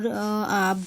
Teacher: বা বর্ণের উচ্চারণের সময় আওয়াজ দুই ঠোঁটে এসে থেমে গেছে কাজেই বর্ণের মাঝখানে দুই ঠোঁট বর্ণের মাখরাজ দুই ঠোঁট এই যে